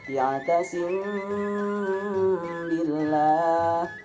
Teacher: Cara membacanya itu harus samar-samar di bibir dan didengungkan. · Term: ikhfa syafawi